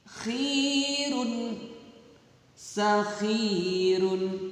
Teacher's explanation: Nah, ini tidak ada ya sukunnya, jadi khirun, sakhirun, gitu ya. Jadi ini cara membacanya dibaca panjang karena kasroh diikuti ya sukun